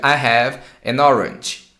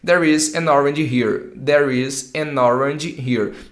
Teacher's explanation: Você emenda o N com apple, an apple, como se fosse o N com A junto.